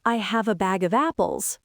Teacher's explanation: The word bag is in the middle of the flow. It's longer than back, but it's not super exaggerated.